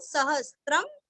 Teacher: सहस्त्र अनुस्वार का उच्चारण आधा म, सहस्त्रम, विष्णोर नाम सहस्त्रम में, म अनुस्वार का उच्चारण करके आगे में बोलना है।